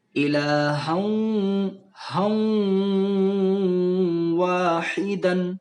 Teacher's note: جیسے یہاں پہ ہا کے اوپر دو زبر کی تنوین ہے اور دو زبر کی تنوین کے بعد والا حرف حروف یومن کے 4 حرفوں میں سے ہے، تو ہمیں یہاں پہ گنہ کرنا ہے، اور ہا کو جب واو میں ملائیں گے تو اس میں گنہ میں واو کی آواز بھی پیدا ہوگی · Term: ادغام واو